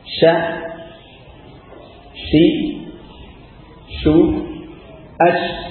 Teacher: Dan ini huruf shin memiliki sifat tafashi ya. Tafashi artinya banyak suaranya menyebar di mulut. Lebih suara nafasnya atau udaranya itu menyebar ya, di mulut.